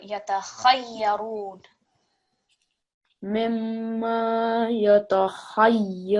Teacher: really try and get that kha from your throat.